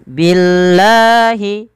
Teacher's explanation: lafal Allah didahului dengan huruf kasrah, maka lamnya dibaca tipis.